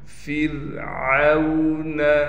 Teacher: را کو بالکل باریک کر کے پڑھیں گے، عین کو اس کے مخرج یعنی گلے کے درمیان سے نکالیں گے